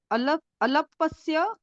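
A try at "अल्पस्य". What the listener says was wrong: Is there alapa or alpa? Alapa no. Alpasya.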